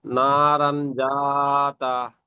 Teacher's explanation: জাল এসেছে তাই একে নাকে তুলে এক আলিফ পরিমাণ গুণনা করে পড়তে হবে